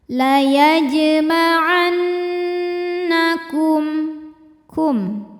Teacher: menghadapi huruf selain mim dan ba yaitu huruf hamzah cara membacanya mim sukun kita bunyikan dengan jelas jadi bunyinya bunyi m ya dan tidak perlu kita tahan · ghunah musyaddadah atau wajibul ghunah atau Nun musyaddadah sebab Nun bertasdid cara bacanya dengung bunyi dengungannya tahan sampai ada suara masuk hidung kurang lebih dua harakat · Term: izhar syafawi